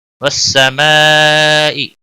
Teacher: والسماء بڑی مد ہے، مد متصل 5 الف کے برابر کھینچ کر پڑھیں گے. ز الف مدہ ہے 1 الف کے برابر کھینچ کر پڑھیں گے.